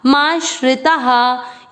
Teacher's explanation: आ की मात्रा इसलिए विसर्ग को पढ़ेंगे हा